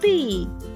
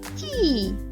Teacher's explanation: клоун топ завжди вимовляє звук т твердо а клоун тіп завжди вимовляє звук ть м'яко